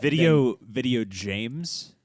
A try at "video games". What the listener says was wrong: games with a hard G. People say it's like GIF and GIF, but no, it is like, Pac-Man?